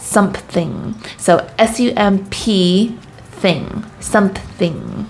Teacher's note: for some reason we just love to add a p